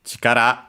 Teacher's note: Chikara, again, force, strength, accented on the last syllable.